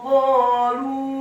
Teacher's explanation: huruf qafnya dibaca tafkhim tebal fathah dua harokat karena setelahnya ada alif. Huruf lamnya dibaca tipis dhammah 4 sampai 6 harokat.